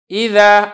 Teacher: اسی طریقے سے اذا، اب میں نے اس کو ایسے نہیں پڑھا ایذو، کیونکہ یہ ذال ہے اور ذال حروف مستعفلہ میں سے ہے لہذا یہاں پہ آواز آپ کی باریک ہوگی، آواز آپ کی موٹی نہیں ہوگی۔